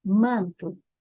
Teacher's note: manto você não pronuncia o n nem o m nesta posição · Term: dígrafo vocálico